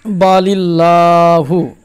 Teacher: যদি পূর্বে জের থাকে তাহলে আল্লাহর লামকে বারিক অর্থাৎ লা পড়তে হয় যেমন বালিল্লাহু এখানে দেখেন লা মুশাদ্দাদ তার পূর্বে জের রয়েছে তাহলে